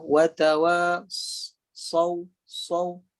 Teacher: Ada satu lagi huruf yang sama dengan huruf zai dan juga huruf sin ialah huruf sad. Okey, cuma huruf sad ni hujung lidah di belakang gigi kacip bawah, tapi permukaan tengah lidah tu atau kiri kanan lidah tu dia melengkung. Okey. Dia ada sifat isti'la, ada sifat terangkat pangkal lidah, dan dia ada sifat melengkung lidah. · Huruf sad ni desirannya macam bunyi burung. Ada bunyi macam siulan. Watawa saw, bunyi dia ada bunyi desiran burung atau siulan burung.